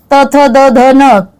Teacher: गट आहे त थ द धन इथ जीभ लागते वरच्या दाताच्या वरच्या दाताच्या मागच्या बाजूला पुढचा भाग लागतो